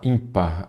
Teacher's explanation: a sílaba forte é a penúltima